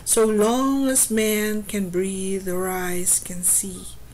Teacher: there are five pairs of stress and unstressed syllables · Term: iambic pentameter